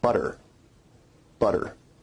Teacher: a rapid flick of the tongue to some place of articulation in North American English we only really have one tap and that's at the alveolar Ridge you can hear the tap sound in the word butter butter